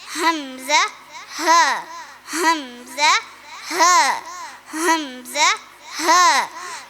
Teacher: തൊണ്ടയെ നമ്മൾ 3 ഭാഗങ്ങളായാണ് തിരിച്ചിട്ടുള്ളത്. തൊണ്ടയുടെ അടിഭാഗത്ത് നിന്ന് വരുന്ന അക്ഷരങ്ങളാണ്